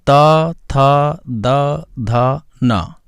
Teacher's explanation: चौथा पॉइंट है ता वर्ग, इसके अंतर्गत ता, था, दा, धा, ना ये आते हैं। ये जो है दांतों का स्पर्श करते हुए बोले जाते हैं